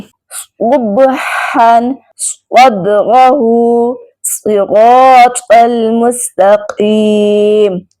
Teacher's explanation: अब यहाँ सौद को मोटा अदा ना किया तो इसकी आवाज सीन से बदल जाएगी, जिससे मानी बिल्कुल बदल जाएंगे।